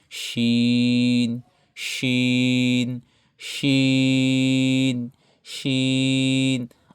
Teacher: শিনটা হবে একটু মোটা করে, জিহ্বার মধ্যখান থেকে। শিন শিন শিন শিন।